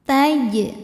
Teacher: Sebab huruf jim sukunnya sukun asli dan ada di tengah bacaan. Cara bacanya jim dipantulkan dengan pantulan yang kecil. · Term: qalqalah sughra